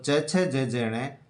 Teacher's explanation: तालव्य व्यंजन है, जीभ तालु को स्पर्श करती है